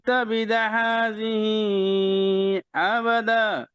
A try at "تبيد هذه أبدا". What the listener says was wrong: তাবিদা, বিতে মাদ, জেরের পরে ইয়া মাদ আছে, জেরের পরে মাদ।